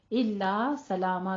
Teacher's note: दोनों जगहों पे सला में भी और ला में भी अलिफ मद अदा करना है